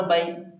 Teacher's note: با یا زبر بئی، ہم نے یا لین کے بارے پڑھا تھا 2 دن پہلے، یا ساکن سے پہلے زبر ہو تو یا لین ہوگا، یا لین کو نرم آواز کے ساتھ جلدی پڑھیں گے، لانگ نہیں کرنا ہے